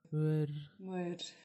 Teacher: Esse O com um tio, na verdade, é um schwa. Não é uma vogal nasal.